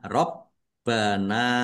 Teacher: B-nya dibaca dobel ada tasdidnya ditekan dan ditahan biar tampak dobelnya. Rabbana nun fathah alif mad thobi'i.